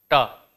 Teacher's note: बोलते समय जीभ जो है ऊपर मूर्धा में टच कर रही है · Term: स्पर्शी